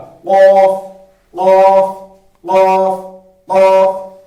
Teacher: قوف جو ہے یہ زبان کی جو جڑ ہے وہاں سے ادا ہو جائے گا